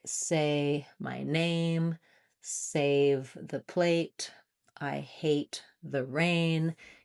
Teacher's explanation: You're trying to really match and keep that A sound, the long gliding diphthong, rather than being a short sound or being too open like eh or too closed.